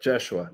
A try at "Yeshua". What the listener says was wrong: Yeshua. No J. There's no J. Yeshua.